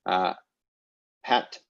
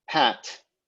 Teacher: pat and pat, unaspirated versus aspirated P